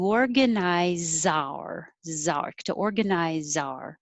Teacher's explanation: the z will connect to the o